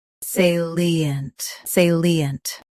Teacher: Stress say first. Keep li clear and end with a soft unt.